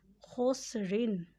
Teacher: اسے حلق سے ادا کریں اور یہ موٹا بھی پڑھا جائے گا